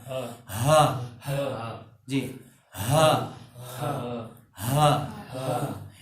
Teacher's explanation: और ये जो हा है, ये जो गोल वाव के बाद जो हा है, हा ये हलक के एंड से, सीने के पास से, अगर कोई सीने पर हाथ रखकर हा को बोले तो उसका सीना वाइब्रेट करेगा।